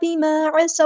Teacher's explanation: ہے، بیما الف مد آ گیا تو مد اصلی کریں گے، عین کو مستحلق کریں گے، مڈل تھروٹ سے ادا کرنا ہے